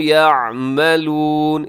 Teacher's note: اسے یعملون نہیں پڑھنا، عین کو اپنے حلق سے، وسط حلق، حلق کے درمیان سے عین ادا ہوتا ہے